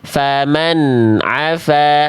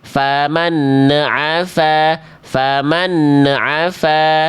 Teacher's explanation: bunyi n-nya tidak ada bunyi ujung vokal e.